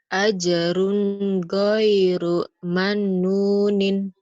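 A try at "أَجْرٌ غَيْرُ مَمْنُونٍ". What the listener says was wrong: mam. Ajrun ghairu mamnunin. Kamu Mbak sama Nun sering ketukar itu Mbak, Neng.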